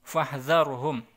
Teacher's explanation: ini ro ini kalau di belakangnya ada fathah dan dia harokatnya sukun, maka dia dibaca tebal.